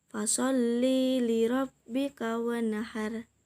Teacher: nun sukun bertemu dengan hak jadi dibaca dengan jelas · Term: hukum izhar halqi, idhar halki